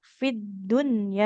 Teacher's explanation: Fit, enggak fil. Kalau setelah huruf alif lamnya tasdid maka ini namanya idgham syamsiah ya, tidak dibaca.